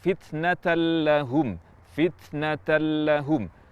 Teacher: misalnya fitnatahum fitnatahum di nun mati atau tanwin bertemu lam ini tidak disertai dengan gunah sehingga yang kita baca adalah huruf lam murni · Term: bila gunah